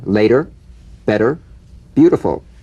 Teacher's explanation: the medial T becomes a soft D